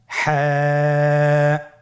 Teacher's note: হা হরফটি কীভাবে উচ্চারিত হবে? হা হরফটি উচ্চারিত হবে কণ্ঠনালীর মধ্যখান হতে। গলা চিপে ধরে আপনি উচ্চারণ করুন।